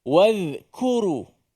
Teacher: Kaf suaranya tak keluar dia hanya angin saja